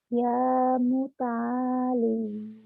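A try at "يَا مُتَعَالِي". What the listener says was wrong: Ya muta'ali. Bagus.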